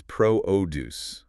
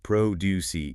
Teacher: The noun, the section itself, is produce. Emphasis on the first syllable.